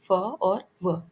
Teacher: लेबियोडेंटल, lower lip plus अपर teeth, example फ और व।